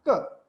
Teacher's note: when we make a contact between the root of our tongue and the upper part of it, which is called kantha, then we can pronounce ka.